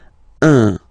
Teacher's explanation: Of course, after that you will master it without any problem and without any doubt, but you've got to pronounce it like un. So it's what we call the nasal, so it goes in your nose, okay? So if you listen to me, you don't hear any N